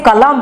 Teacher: जैसे ये आपके तीन व्यंजन वर्ण हो गए, इनके द्वारा प्रयोग किया गया शब्द को हम जब उच्चारण करेंगे, इसके अंतिम अक्षर को हलंत के तरह उच्चारण करेंगे